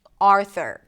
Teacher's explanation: Primary stress is on the first syllable.